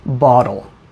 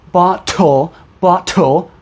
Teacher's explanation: pronunciation you can hear that I said bottle because I'm American I use something called the flap t or the tap t where to make the T sound your tongue just goes up and down but no air comes out